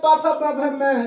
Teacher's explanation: प फ मतलब ये जब बोलेंगे तो होठ दोनों आपस में सटने लगेंगे, इसलिए हम इसको क्या कहते हैं, होठ को स्पर्श करने की वजह से होस्ट व्यंजन कहते हैं।